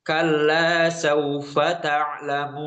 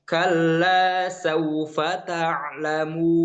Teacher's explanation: Ketika mimnya ada dengung di sini, tapi kemudian ketika harokat dhammah yang dipanjangkannya, maka hilanglah dengung tersebut. Kemudian ketika nun juga keluar dari hidung, maka kita adakan kembali.